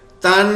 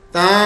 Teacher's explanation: یہاں پہ دیکھیں تن، غنہ بھی ہے نون بھی ہے، غلط ہو گیا. تا، اب صرف غنے کی آواز ہے، نون کی آواز نہیں ہے. نون کی آواز چھپانی ہے، نون کی چھپانی ہے، غنے کی کرنی ہے. · ہمیں یہ مشق کرنی ہے کہ نون کی آواز نہ آئے، صرف غنے کی آواز آئے